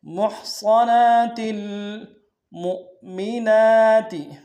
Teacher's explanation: میم کو آگے جو حمزہ اس کے سامنے لائیں گے، یہ حمزہ بشکل واو ہے، جھٹکا دیں گے ، میم کو نون سے ادا کریں گے، نون کے اوپر